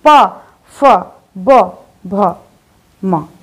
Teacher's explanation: तो जब आप ये वर्ण बोल रहे हैं तो दोनों ओष्ठ क्लोज, मतलब जो आपका माउथ है वो क्लोज हो रहा है, मुंह आपका बंद हो रहा है। मुंह बंद हो रहा है यानी कि ओष्ठ एक दूसरे में स्पर्श हो रहे हैं। · प, जब ओष्ठ क्लोज हुए तभी तो आपके, जब ओष्ठ बंद हुए तभी तो ध्वनि निकलकर बाहर आई है पा की।